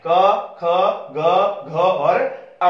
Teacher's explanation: कंठस्थ में साउंड सीधा हमारे गले से आ रही है आवाज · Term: कंठस्थ व्यंजन